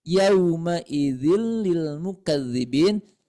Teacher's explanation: Bil guna itu artinya tanpa dengungan cukup dimasukkan saja yaumaidin Lil mukadzibin tidak harus ditahan dulu oleh kita yaumaidil mukbin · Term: idgham bila ghunna